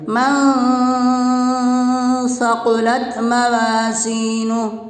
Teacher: نون ساکن کی آواز کو ناک میں چھپا کر پڑھیں گے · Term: اخفا